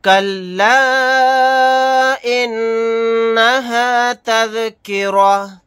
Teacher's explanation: نون کے اوپر تشدید ہے، یہاں پر غنہ کر کے پڑھیں گے۔